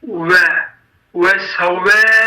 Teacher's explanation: vav hərfi dodaq hərfidir və biz vav hərfin öz məxrəcindən səsləndirmək üçün sanki u deməyə çalışırıq və vav hərfini səsləndiririk.